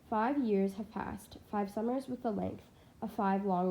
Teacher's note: the repeated five provides a sort of vibration of all those f and v sounds which are further softened by the m n sounds and sibilance and the liquid rl sounds the whole thing landing as if